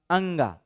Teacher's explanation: अंगा जब बोलते हैं तो देखिए वहां पर नाक से हवा निकल रहा है क्या अंगा यहां देखिएगा नाक से हवा आपका निकल ता है